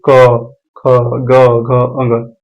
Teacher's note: है जैसे कि आप उच्चारण कीजिए क ख ग घ अंग कंठ से इसका उच्चारण हो रहा है